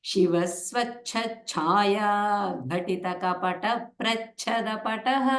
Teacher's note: But ta, ta, ka, pa should not get any Mahapranas there. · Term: Alpa Pranas